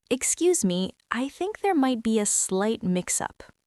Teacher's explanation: You want your voice to sound collaborative and slightly inquisitive. Your pitch should go up slightly at the end of the sentence.